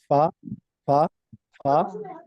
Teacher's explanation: فا دونوں اوپر کے دانتوں کے اندرونی کنارے سے اور نچلے ہونٹ کے تر حصے سے زیادہ ہوتا ہے. اور ہوا آپ کے ہینڈ پر نہ پڑے، آپ اگر فیس کے سامنے اپنا ہاتھ رکھ لیں تو اس پر ہوا نہ آئے.